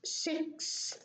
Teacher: So the S is deleted